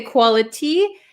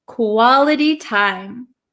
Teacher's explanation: this T is surrounded by two vowel sounds. So this becomes a flap T